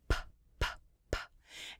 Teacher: Examples are p, p, p. And when you put your hand on your throat, the p, p, p, you don't use your vocal cords for.